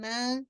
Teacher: الف اٹیچ ہے نا، تو میم فتح ما، میم فتح الف سکون ما، 2 کاؤنٹ آپ نے پڑھنا ہے